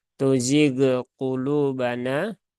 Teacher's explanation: Huruf ghain dia tidak sukun, tidak sukun, tidak memantul ya.